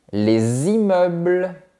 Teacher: Mais on dit : les immeubles. On fait la liaison et, dans ce cas, on prononce le S.